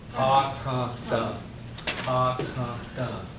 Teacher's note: The A is a nasal, but that T-H, that T, that it's like tum, tum.